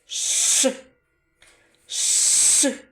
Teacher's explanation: при його вимові повітря затримується глибоко у роті біля задньої стіни язика звук ш називається твердим приголосним у звиковій схемі позначається одніє рискою